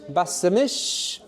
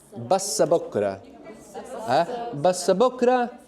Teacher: bas mish, we're going to put a little helping vowel in there.